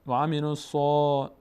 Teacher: صاد فتحه داره، بعدش الف پر خوانده میشه، صدای آ میگیره و پر هم میشه، از اون حروفی است که پر میشه.